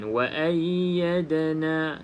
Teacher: Da salah satu daripada huruf qalqalah. Jadi kena ada lantunan. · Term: qalqalah sughra